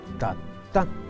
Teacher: la segunda a es a nasal